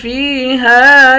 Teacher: فا کو بھی ایک الف کی مقدار کھینچ کر پڑھیں گے، یا حروف مدہ ہے